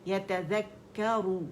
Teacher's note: پھر یتذکر، ذیل باریک ہے، جبڑا کھلے گا اس پہ بھی، اور کاف مشدد ہے، پہلا ساکن دوسرا متحرک ہے